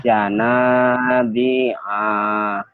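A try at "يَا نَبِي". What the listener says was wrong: Pendek.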